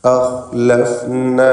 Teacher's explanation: അഖ്ലഫ്ന എന്ന് പറയുമ്പോൾ ഖാ തഫ്ഖീം ചെയ്യേണ്ട ഇസ്തിഅലാന്റെ അക്ഷരങ്ങളിൽ പെട്ടതാണ്. ഖാഇനെ നിസ്ബിയ തഫ്ഖീം കൊടുത്ത് അഹ് എന്ന് തടിപ്പിച്ച് ഉച്ചരിക്കുക · ഖാ അദ്നൽ ഹൽക്ക്, തൊണ്ടയുടെ മേലേ അറ്റം, അതാണ് ഖാൻ്റെ മഖ്റജ്